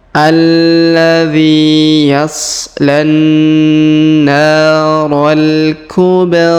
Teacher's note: huruf ba berharakat sukun maka kita pantulkan